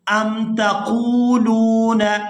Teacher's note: یہاں قاف کو واو ساکن کے ساتھ ملائیں گے تو کھینچ کر ادا کریں گے اور آگے لام کو واو ساکن کے ساتھ ملائیں گے تو کھینچ کر ادا کریں گے۔